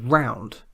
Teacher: the word round begins with a round lip